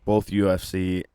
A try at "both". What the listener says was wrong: Do you use an L when you say both? Say it again.